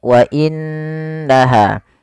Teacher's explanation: Kemudian pada lafal wa innaha di sini ada nun berharakat tasydid. Apabila ada nun berharakat tasydid kita hukumi dengan bacaan ghunah. Yaitu suara nunnya kita tahan dengan sepanjang dua harakat. wa innaha tidak langsung dibaca wa innaha tapi ditahan dulu suara gunahnya sepanjang dua harakat. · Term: gunnah